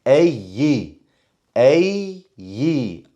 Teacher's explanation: I'm changing my pitch to show that the ya is mushaddad. So I'm actually adding a ya in a place where I should.